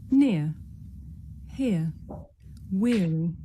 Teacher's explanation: The shape the mouth makes changes from the beginning of the sound to the end. It's pronounced ear. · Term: diphthong